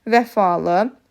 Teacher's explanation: Vəfalı, burada ahəng qanunu pozulmuş hesab olunur. Ə saiti incə, A və I saitləri qalın saitlərdir.